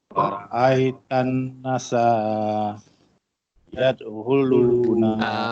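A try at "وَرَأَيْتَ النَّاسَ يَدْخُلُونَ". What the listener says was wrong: Wa ra'aitan nas. Na tu yang panjang. Nasayad.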